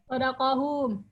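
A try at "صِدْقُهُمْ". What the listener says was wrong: Bukan sodako tapi sid. Kofnya doma, sidquhum. Kenapa kok sidquhum? Kok tidak sidqohum atau kihim?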